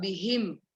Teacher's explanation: Ha comes from the throat again. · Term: throat letters